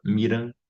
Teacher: Aqui em Belo Horizonte a gente usa Mirandinha, né? Que é um D palatalizado, né? A gente vai deixar essa consoante junto do D para fazer j, que é o que acontece quando a gente tem um D e um T também antes de um I, né?